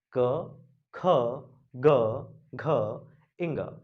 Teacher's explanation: प्राणवायु कंठ को स्पर्श करते हुए मुख के बाहर निकली, इसलिए क वर्ग को कंठे कहा जाता है।